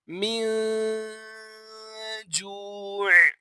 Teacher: آپ دیکھ سکتے ہیں یہاں پر نون ساکن ہے، نون ساکن کے بعد جیم جو ہے وہ حروف اخفا میں سے آ رہا ہے، لہٰذا یہاں پر اخفا کا قاعدہ لگے گا اور ہم غنہ کر کے پڑھیں گے